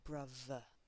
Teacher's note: in the uk where they would use a v here like brother